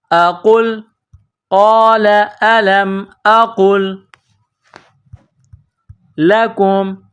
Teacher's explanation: قَالَ أَلَمْ أَقُلْ، حمزہ زبر أ، قاف لام پیش قل، قاف کو لام کے ساتھ پلس کرنا ہے۔ یہ موٹا قاف ہے، بڑا قاف، اس کو موٹا کرنا ہے